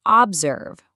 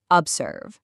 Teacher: vowels get weak and reduced to this neutral uh sound. That's the schwa. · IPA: /ə/